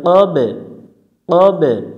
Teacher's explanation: কফ অক্ষরটা এটা হচ্ছে ইস্তিলার অক্ষর এজন্য এটা মোটা করে পড়তে হবে